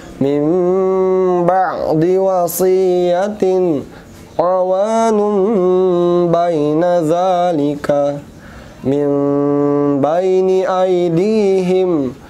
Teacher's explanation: Maka cara membacanya, sukun atau tanwin bertemu ba, maka cara membacanya bunyi nun sukun diganti menjadi mim